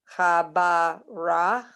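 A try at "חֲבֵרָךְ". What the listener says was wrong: Okay, but again, the vowel under the bet is the E. So chabi, and then chabir, and then cha. It's the final chaf with an a under it. So remember the chaf here, chabir cha.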